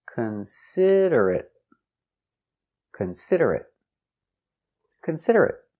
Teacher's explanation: four syllables the stress is on the second syllable